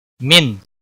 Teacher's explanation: سا، ایک الف کے برابر کھینچ کر پڑھیں گے، الف مدہ ہے، نہ کو کھینچنا نہیں۔ من، نون ساکن کے بعد حروف حلقی کا عین آیا ہے، یہاں پر اظہار حلقی ہوگا۔